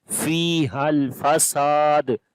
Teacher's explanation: Sin we long due to alif madda, and also we make qalqala on this dal.